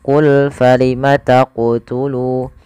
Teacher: Qalqalah artinya memantul. Maka ketika melafalkan huruf qaf di sini harus memantul